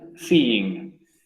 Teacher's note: el sonido termina con i, y el ing también tiene una i al principio, se unen. Entre comillas se unen, no se hacen un solo sonido, solamente se hacen como una i más larga.